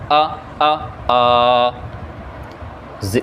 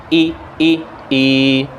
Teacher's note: کھڑا زبر، کھڑی زیر، الٹا پیش، ان کو ڈبل حرکت کے برابر آپ نے لمبا کرنا ہے. مثلا کھڑا زبر ہے تو 2 حرکت کے برابر آ.